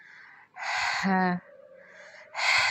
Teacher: ہا جو ہے یہ حلق کے درمیانی حصے سے ادا ہوگا